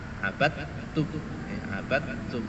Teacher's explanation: dal yang sukun itu tidak boleh dikolkolah. Ya, ini harus dimasukkan pada huruf ta. Abadtum, abadtum.